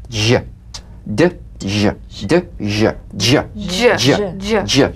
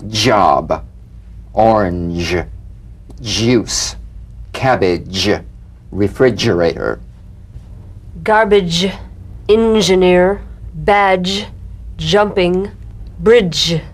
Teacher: So place the tongue on the upper gum ridge for the d. Then let the tip peel down for the z resonance. J- dj. Use a light quick energetic staccato treatment and feel a voiced percussive sensation flowing from the hard pallet onto the gum ridge.